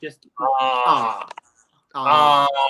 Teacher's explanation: a lot of accents from, like, say, England and stuff, they don't say R